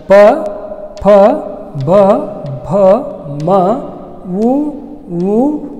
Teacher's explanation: ತುಟಿಗಳ ಸಹಾಯದಿಂದ ಉಚ್ಚರಿಸಲ್ಪಡುವಂಥ ಅಕ್ಷರಗಳು ಓಷ್ಠ್ಯ ಅಕ್ಷರಗಳು